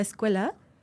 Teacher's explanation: los dientes los juntas sale el aire por los dientes y luego pasas a un sonido que es velar O sea que es hasta atrás es eso es super complicado